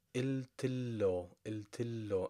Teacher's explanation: In speech, normally, native speakers would jump over the alif here, which is the airy letter, and they would say iltillo, iltillo, and they joined the T with the L directly